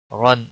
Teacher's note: را کے اوپر دو زبر ہے اس لیے موٹا پڑا جائے گا